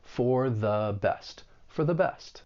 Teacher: the article 'the', it is the weak 'the', and you're using the schwa sound, that uh sound, because it comes before a word that begins with a consonant sound.